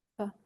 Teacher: L'autre, celui qu'on a vu dans les premières lettres, le th, c'est votre langue qui va jouer le son. Et le F français, c'est pas la langue. C'est uniquement les incisives sur les lèvres. Et votre langue, elle bouge pas.